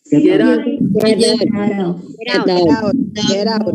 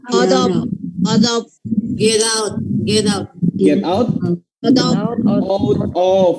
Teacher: Jadi kalau udah hurufnya T ketemu dengan vowel atau ketemu huruf vokal, maka akan ada bacaan D-nya di situ.